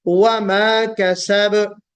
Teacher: वमा में वाव को गोल करना है, होठों को गोल करके अदा करना है